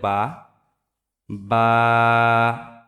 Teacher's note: দুই ঠোঁটের যে ভিজা অংশ, সেই ভিজা অংশ থেকে উচ্চারিত হবে বা।